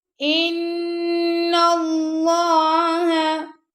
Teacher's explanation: اب نون پہ ہم غنہ کر رہے ہیں اور اللہ کی لام کو موٹا پڑھ رہے ہیں کیونکہ اللہ کی لام سے پہلے زبر آ گیا، ان اللہ